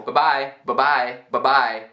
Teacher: A primeira bye tá encurtada para formar b.